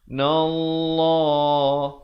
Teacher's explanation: lafz jalalah dibaca tebal dua harakat